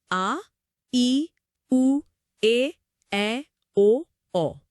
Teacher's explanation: इन सातों स्वरों के उच्चारण में ह्रस्व स्वरों की तुलना में ठीक दो गुना समय लगता है। यानी दो मात्राओं का समय। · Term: दीर्घ स्वर